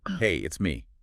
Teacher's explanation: It specifically notes that the pitch isn't flat. It goes up slightly on hey, and then it comes down at the end on me. Hey up, it's me down. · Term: Intonation